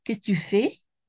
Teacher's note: Il y a beaucoup de mots, mais j'ai un seul accent sur fait.